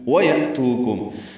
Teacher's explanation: وتتقو ویأتوکم حمزہ ساکن جھٹکے سے پڑھیں گے، یا میں تو واو مدہ ہے، کم میں میم ساکن کے بعد میم آئی ہے، ادغام ہوگا، ادغام شفوی ہے یہ۔ اب یہاں پہ آپ دیکھ لیں کہ ادغام شفوی کی ایک مثال ہے اس میں، اور دونوں میمیں ادغام کر دی گئی ہیں، غنہ ہوگا۔